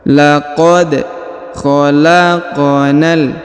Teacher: q berharakat sukun maka kita pantulkan atau kita qolqolahkan